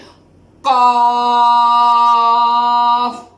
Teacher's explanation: एक तो ये मोटा है, दूसरा इसको लंबा करके पढ़ते हैं।